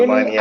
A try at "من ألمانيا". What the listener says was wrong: അൽമാനിയ. അവിടെ അലിഫിന്റെ മുകളിൽ ഹംസ ഇട്ടിരിക്കുന്നുണ്ടോ? അപ്പൊ മിനൽ മാനിയ എന്നല്ല, മിൻ അൽമാനിയ. മിൻ അൽമാനിയ.